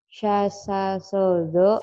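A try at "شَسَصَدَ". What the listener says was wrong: Sya. Sya sini kurang. Sya. Sya ya.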